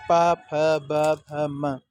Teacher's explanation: प वर्ग के जितने लेटर होते हैं, अक्षर होते हैं, प, फ, ब, भ, म, ये सब ओष्ठ वर्ग के अंतर्गत आते हैं। इसी के साथ में आपका उ स्वर जो है, उ, ये भी आपका ओष्ठ के अंतर्गत आता है।